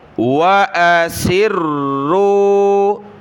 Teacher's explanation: را کے اوپر تشدید ہے تو اس کو جمع کر سختی کے ساتھ پڑھنا ہوگا